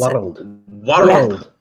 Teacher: I didn't know that world had 3 syllables in it until I heard a Scottish person pronounce World